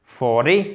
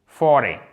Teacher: Vous voyez, l'accentuation, elle se fait sur la première syllabe.